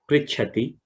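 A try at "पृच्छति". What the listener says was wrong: So a few places Prichhati Cha Mahaprana was missed. Prichhati Cha. Cha, that Mahaprana Cha did not come well.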